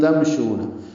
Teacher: شو واو مدہ ہے، 2 حرکات لمبا ہے